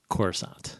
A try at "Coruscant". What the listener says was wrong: That's not how you pronounce it. The C is silent. Second C.